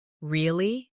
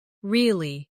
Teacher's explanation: Say really with a rising tone to show surprise. Now say really with a falling tone to show you don't believe someone.